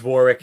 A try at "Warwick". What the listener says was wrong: Drop the second W. Because there's a W. It makes you think it's Warwick. It's Warwick.